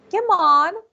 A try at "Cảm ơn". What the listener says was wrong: Cảm ơn. No, it's not on. Cảm ơn.